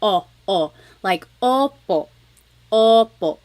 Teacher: I think of it like having a ball in your mouth your tongue gets kind of pushed back and down a little bit and the inside of your mouth is open and wide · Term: letter O